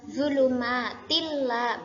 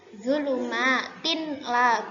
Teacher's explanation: yakni memasukkan atau mentasydidkan dengan tanpa mendengung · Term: idgham bila gunnah